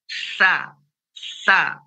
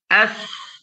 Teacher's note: Ya, begitu juga yang berikutnya, ya, fahassa huruf sa. Sa itu ada nafas, makronnya ujung lidah bertemu dengan ujung gigi seri atas. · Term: hamas